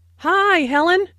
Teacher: Notice that the i sound in hi is extended, to show that is very pleased to see Helen.